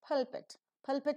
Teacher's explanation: the first part is aspirated the second is not